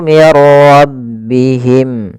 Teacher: yaitu terjadinya ketika ada nun mati atau tanwin bertemu dengan huruf ro. Cara membacanya masukkan nunnya kepada huruf ro sehingga suara nunnya hilang langsung terbaca dengan jelas suara rnya. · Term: Idgham bila gunah